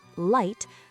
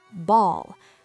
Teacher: It functions as a consonant made with minimal obstruction, approximate, commonly appearing as either a clear /l/ sound before vowels, e.g. light, or a dark /l/ sound before consonants, e.g. ball.